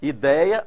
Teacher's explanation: observem que a sílaba tônica está no EI, olha, e DEI.